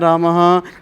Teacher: विसर्ग भी ह जैसी ध्वनि देता है